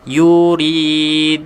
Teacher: yuridu panjangkan sebab ada waw yang tidak ada baris, kita panggil waw mati ataupun waw mat.